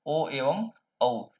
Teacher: ओ एवं औ इन दो वर्णों का उच्चारण स्थान कंठ और ओष्ठ होता है।